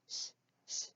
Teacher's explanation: is the shh the mouth doesn't open for this one the the air is just forced out between the teeth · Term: sh blend